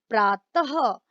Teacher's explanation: विसर्ग का उच्चारण ह के रूप में होता है